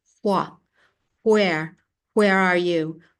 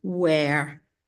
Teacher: wh that it's actually officially as if you reverse them and you hear this breathy H and then the W